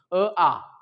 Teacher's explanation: अ आणि आ चा उच्चार एकाच ठिकाणाहून व्हायला कंठातून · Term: कंठ्य